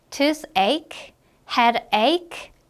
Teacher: 발음할 때는 이 CH 부분이 어떻게 발음이 되니 지금? 크로 발음이 나요. 그래서 toothache, headache, 크로 발음해 주시면 되겠습니다.